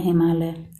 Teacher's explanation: हिम का अ और आलय का आ मिलकर आ बन गया है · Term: दीर्घ संधि